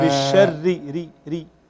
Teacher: الراء الآن الموجب لترقيقها هو الكسر، الراء المكسورة كلها مرققة بالشر، كل راء مكسورة في القرآن فهي مرققة.